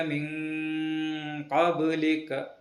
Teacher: ബ എന്ന അക്ഷരത്തിന് സുക്കൂൻ വരുന്നു. കൽക്കല അക്ഷരമായതുകൊണ്ട് അവിടെ ശബ്ദം തട്ടി പ്രതിഫലിപ്പിക്കണം. · നൂനിന് ശേഷം ഇഖ്ഫാവിൻ്റെ കാഫ് എന്ന കനപ്പിച്ച് പറയേണ്ട അക്ഷരം വരുന്നു. അതുകൊണ്ട് നൂനിനെ മണിപ്പോടെ മറച്ചു പിടിക്കുമ്പോൾ ആ മണിപ്പിനും ഒരു കനപ്പ് വേണം